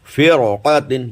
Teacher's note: را ساکن کے بعد حروف مستعلیہ اسی کلمے میں ہے اس لیے را کو پر پڑھیں گے